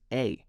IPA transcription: eɪ